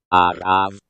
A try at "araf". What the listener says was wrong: Araf. There's not enough phlegm in it. It doesn't sound right.